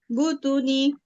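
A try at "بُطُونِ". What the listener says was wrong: বুতু টান হবে না? বা কি টান হবে?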